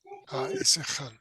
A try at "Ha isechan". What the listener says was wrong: Needs a little pause between those vowels.